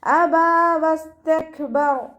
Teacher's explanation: സീന് കൽക്കലയുടെ ലെറ്ററില്ലാത്തത് കൊണ്ട് half സുക്കൂന് കൊടുക്കുക. കാഫിന് സുക്കൂനാവുമ്പോൾ കുറച്ച് എയർ പുറത്തോട്ട് പോകണം, കാറ്റ് പുറത്തോട്ട് പോകണ സൗണ്ട് കൊടുത്തിട്ട് വേണം ഉച്ചരിക്കാൻ കേട്ടോ.